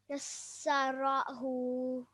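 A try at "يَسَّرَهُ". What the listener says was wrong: Excellent. Well done.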